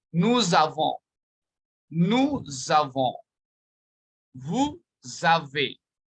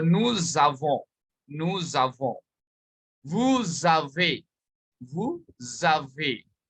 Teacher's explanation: S and A together, the sound will be Z sound. When a word ends with S and the next word starts with a vowel, there's a linking of the sound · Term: liaison